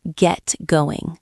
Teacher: The T in get stops quickly.